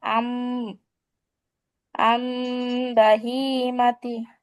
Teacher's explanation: নুন সাকিন বা তানবিনের পর উক্ত হরফটি আসলে, অর্থাৎ বা হরফটি আসলে, উক্ত নুন হরফটিকে অথবা তানবিনকে কি করতে হবে? মিম দ্বারা পরিবর্তন করে পড়তে হবে।